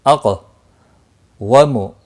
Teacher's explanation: قاف مستعلیہ ہے پر بھی پڑھا جائے گا اور اس پر قلقلہ بھی ہوگا